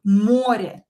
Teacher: O here is not in a weak position anymore. We stress it. Море. So we have O here that for sure we will write as O because it's stressed.